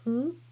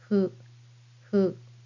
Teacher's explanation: Hu is not a fricative sound like English F sound. It is more like blowing a candle very gently. Your mouth looks like U shape and say hu. · It is more like blowing a candle very gently. Your mouth looks like U shape and say hu. Upper and lower lips don't touch for this hiragana. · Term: hiragana hu